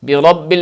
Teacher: برب میں را کو پر پڑھنا اچھا ہے